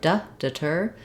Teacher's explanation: when we have the word deter, our stress falls on the second syllable, ter. That means that the letters DE, rather than saying de like in debtor or death, they will have a reduced vowel.